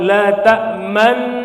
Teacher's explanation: menampakkan dhammah terbuang dengan isyarat bibir ismam dengan cara mencucukan.